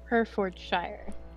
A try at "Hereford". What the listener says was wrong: No, not Shire. Hereford,